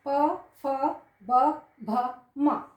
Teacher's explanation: प वर्ग, प मतलब ओष्ठ, मतलब होठों से। प, फ, जिसमें बिना अब ये बंद नहीं करते थे, प, फ, ब, भ, म, तो ये हम इसका उच्चारण कहाँ से करते हैं, ओठों से करते हैं।